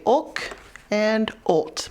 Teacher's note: For our ending blends where the L comes after the vowel, you want to say ulk and ult, more of that back of the throat sound, because this comes after the vowel.